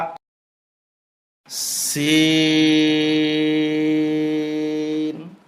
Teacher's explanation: 4 আলিফ টানতে হবে, লিক পানসারের আওয়াজ হবে, জিহ্বার আগা নিচের দাঁতের আগায় লাগবে।